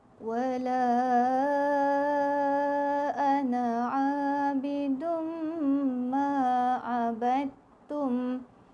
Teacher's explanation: bidum dengung, tanwin jumpa dengan mim syaddah. Semula tanwin jumpa dengan mim syaddah. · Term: idgham ma'al gunnah